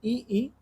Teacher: तालु के जीभ के स्पर्श से बोले जाने को वर्ण तालव्य कहलाता है